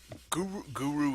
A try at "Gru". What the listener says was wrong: It's not Guru. It's Gru. One syllable.